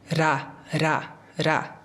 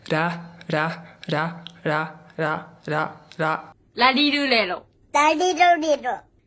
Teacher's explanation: O R japonês, ele é muito mais próximo de uma suavização desse R. Então você ou não encosta ou só chega muito próximo de encostar. É um pouco difícil de explicar.